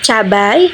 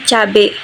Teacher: bunyi diftong yang lebih rumit diubah menjadi vokal tunggal agar lebih mudah dan cepat diucapkan dalam percakapan sehari-hari. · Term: monoftongisasi